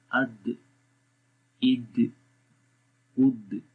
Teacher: غور کریں کہ آواز آپ کی زبان کی نوک ثنایا علیہ کی جڑوں پہ لگ رہی ہے اور ایک دم وہاں سے اٹھ رہی ہے. تو یہ جو اٹھنا ہوتا ہے زبان کا، تو یہ قلقلہ کہلاتا ہے.